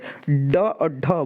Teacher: जिन वर्णों के उच्चारण में जीभ की नोक कठोर तालु के साथ झटके से टकराकर नीचे आती है, ठीक है। झटके जैसे ड और ढ बोलिए आप तो झटके से नीचे आएगी, ठीक। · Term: उच्छिप्त व्यंजन